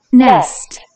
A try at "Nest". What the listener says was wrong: Nest. E가 계속해서 A가 되고 있네요. Nest.